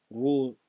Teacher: kendi harekesi ötreli olduğu için kalın okunur